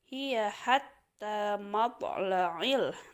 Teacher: Nah, di sini ada matla, berarti hukum bacaannya qalqalah. Ada huruf to di sana, maka dibaca mantul.